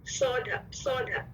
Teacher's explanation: صوت تو مفخم ہے, زیادہ مفخم, لیکن دال مرقق ہے. ٹھیک ہے, دال کو موٹا نہیں کرنا.